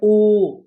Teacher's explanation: हम बोलेंगे ओ तो होठों को भी गोल करना पड़ता है, और कंठ से ध्वनि निकल रही है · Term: कंठ ओष्ठ